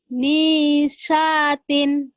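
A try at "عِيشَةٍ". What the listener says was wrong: Ainnya mana? Ain. Bukan ngi, tapi ain. Sya besar ya. Aisyatin. Aisyatin.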